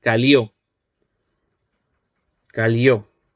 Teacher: en Santa Cruz de la Sierra sí producen este lateral palatal sonoro